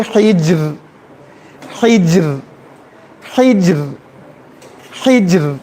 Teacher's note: کسرہ ہے، تو کسرہ کی وجہ سے را کو ہم لوگ باریک پڑھیں گے